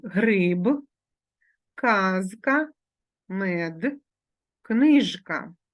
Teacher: дзвінки приголосні звуки в кінці слова і в кінці складу перед глухим приголосним вимовляються дзвінко